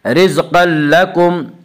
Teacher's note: رزقا لکم میں ادغام بلا غنہ ہوگا